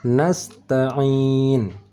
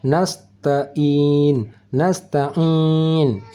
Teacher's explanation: Ini huruf ain, cara bacanya bukan di hidung dan bukan di pangkal tetapi di tengah kerongkongan